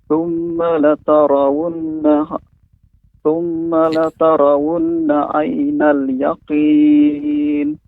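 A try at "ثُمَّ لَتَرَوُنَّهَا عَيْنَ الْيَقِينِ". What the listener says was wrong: Ya, kurang huruf H-nya Bapak. Tapi walaupun Bapak berhenti, terus akhirnya dihilangkan huruf H-nya. Tsumma latarawunnaha.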